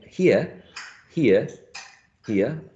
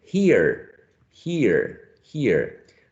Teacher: the british speaker will be using the diphthong and not the r and the american speaker will be producing a monothon and uh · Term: non-rhotic accent